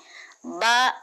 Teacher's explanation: बा मखरजेज शफवी इसका मखरज है दोनों हंठों के मिलने से बा निकलता है। ब दोनों हंठों के गीले हिस्से से अदा होता है।